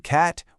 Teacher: a as in cat, which is low and front